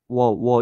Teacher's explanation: 그리고 이제 와부터는 다른 반모음인 w가 들어갔는데, 와는 앞서 말한 것처럼 오에서 아로 와 알 수 있고, 워는 우에서 어로 워 이렇게 된다는 걸 알 수가 있습니다.